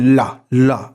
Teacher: ल एक पार्श्विक व्यंजन है क्योंकि इसके उच्चारण में हवा जीभ के दोनों बगल से निकल जाती है। बोल करके देखिए ल बोल कर देख रहे हैं तो हवा क्या हो रही है?